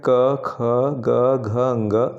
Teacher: स्पर्श व्यंजन क वर्ग, इसके अंतर्गत क, ख, ग, घ, ङ कंठ के अंतर्गत आते हैं